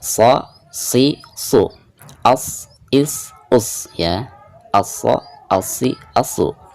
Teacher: shad itu sifatnya isti'la, jadi tengah lidah keangkat ke atas